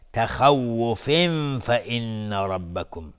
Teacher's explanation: تخوف فإن ربکم، خا باز از حروف استعلاست و تنوین برش فا اخفای حقیقی. فإن نون مشدد 2 حرکت غنه میدیم.